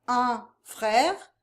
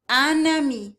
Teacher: If you have a nasal vowel at the end of a word, the following word that begins with a vowel turns that nasal sound into an actual consonant sound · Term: liaisons